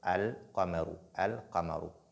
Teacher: le fait de lire la lettre Lam distinctement, c'est-à-dire l'apparence, faire apparaître la lettre Lam